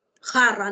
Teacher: la J es velar